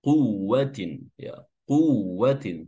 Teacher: Zi ya zi lalu ditarik kiri kanan karena kasrah ya bibirnya li quwwatin ya quwwatin ya. Di sini huruf waw yang bertasydid sekedar ditasdidkan saja dan jangan ditahan. Jangan dibaca di kuwatin ya, tapi dilepas seperti tasdid biasa.